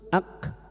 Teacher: kaf sukun yang memiliki sifat hames dan syiddah